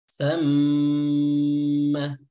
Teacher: Ya, thamma mim tasydid ya, tasydidnya diberikan durasi lebih ya untuk memberikan hak dari sifat gunnah